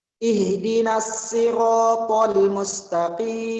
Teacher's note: Mustaqim qaf dibaca tafkhim lagi-lagi walaupun dia berharokat kasrah, kemudian diakhiri dengan mat arid li sukun. Dibaca panjang 5 sampai 6 harokat.